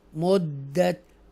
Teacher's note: मुद्दत extra stress के साथ दाल मुशद्दा को हम अदा करेंगे